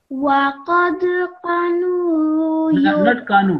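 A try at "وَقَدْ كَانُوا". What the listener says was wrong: Not kanu. After kaf, there is an alif. You just zilla, ka, kaf, alif, long, kanu.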